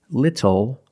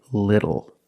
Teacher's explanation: the T changes to a fast D in American pronunciation.